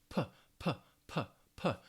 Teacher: with the P sound, the lips are closed. You want to stop that air, and it's also aspirated, that puff, that p, p, p, p. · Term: voiceless sound